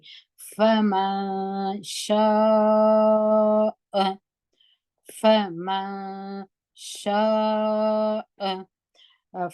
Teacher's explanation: فمن شاء فا په زور وایو او میم باندې زور دی دلته نون اخفا کېږي نون ساکن دی په دې خاطر چې شین په پسې دی شین د اخفا د تورو څخه دی فمن شاء فمن شاء